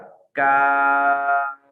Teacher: اور اس تصویر پر آپ غور کریں اور اگلی تصویر پر آپ غور کریں، معمولی سفر کے تھوڑا سا آگے ہو کر کہ جہاں الحنق العظمی تالو کا سخت حصہ ہے یہاں سے ادا ہوتا ہے کاف۔ کاف کی ادائیگی میں ایسا ہو جاتا ہے کہ زبان گویا کہ وہ تھوڑی گول ہو جاتی ہے، اور اس کی جو گولائی ہے وہ گولائی اوپر جا کر نرم تالو کا بقیہ حصہ اور سخت تالو کا جو ابتدائی حصہ ہے اس کے ساتھ جا کر ٹکراتی ہے، تو یہاں سے ادا ہوتا ہے کاف۔